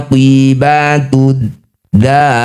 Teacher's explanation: Cara bacanya da panjang ke 6 harokat, huruf terakhir ro sukunkan. Aqibatud dari, setelah dihentikan aqibatud dar. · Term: mad alif disukun